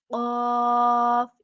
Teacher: जब जुबान की जड़ कौवे के करीब नरम तालु से लगती है तो कौफ अदा होता है · जुबान की जड़ जब नरम तालू से जरा आगे सख्त तालू के साथ लगती है तो काफ अदा होता है · जो कौफ है कैंची वाला कौफ नुक्तों वाला कौफ उसको हमेशा पुर और मोटा भरा जाता है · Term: किताब वाला काफ